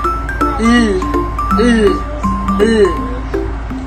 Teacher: Ang hangin ay lumalabas sa gilid ng dila sapagkat ang dulong dila ay nakadikit sa punong gilagid. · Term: paraang pagilid